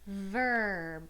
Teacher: you don't really hear the vowel sound as much as you hear the R so that's why we call it an R controlled vowel so